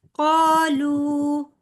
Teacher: قاف کے آگے الف مدہ اور لام کے آگے واو مدہ، تو دونوں حروف جو ہیں 2 کاؤنٹس لمبے ہوں گے